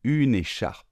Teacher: on ne prononce pas le E final